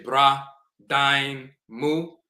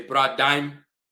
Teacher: They'll drop the u and it becomes bra, dime. The u is dropped when mu is the end of a phrase.